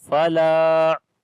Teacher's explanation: There is alif madda, we long one alif.